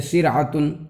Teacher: اگر جو ہے را ساکن سے پہلے کسرہ ہو تو وہ را جو ہے باریک ہوتی ہے